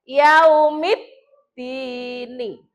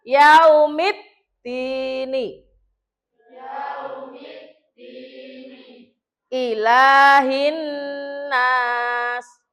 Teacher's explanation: Berarti cara membacanya ini alif lam itu lebur. Lebur itu dianggap tidak ada, langsung masuk ke dal. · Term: alif lam samsiyah